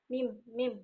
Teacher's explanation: Ada udara yang keluar dari rongga hidung. Dan bergetarnya pita suara juga.